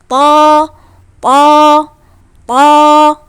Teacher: harus dinaikkan pangkal lidahnya supaya dia suaranya keluarnya tebal